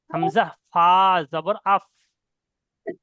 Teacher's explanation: উপরের দুটো দাঁত এবং নিচের ঠোঁটের নিচের ঠোঁটের ভিজা অংশ নিচে ঠোটের ভিজ অংশ আর উপরে দুটো দাঁত হামজা ফা জবর